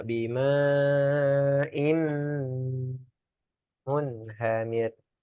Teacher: Nah, itu tanwin bertemu mim. Nanti kita belajar namanya idgham gunnah ya. Munhamir didengungkan.